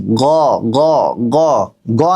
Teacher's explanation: আমরা বাংলা যেভাবে গ বলি সেই গ বললে কিন্তু ভুল হয়ে যাবে। গ একটু ভিতর থেকে বলবেন।